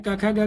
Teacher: लेना यहां पर वो तालू जीभ से अर्थ लेना है कि कोमल तालू या कोमल जीभ के कोमल भाग से उच्चारित होते हैं उन्हें कोमल ताल वर्ण कहते हैं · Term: कोमल तालव्य वर्ण